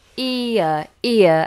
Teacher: it's a diphthong e uh ear and then we have this lovely aspirate H